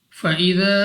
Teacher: اس کے بعد ہے الف سے پہلے زبر، الف مدہ ہے، مگر الف مدہ کی اوپر ہمیں ایک مد نظر آ رہی ہے، جس کی وجہ سے ہم نے اس کو یہاں پہ 2 نہیں بلکہ 3 یا 4 سیکنڈ تک کھینچ کر پڑھنا ہوگا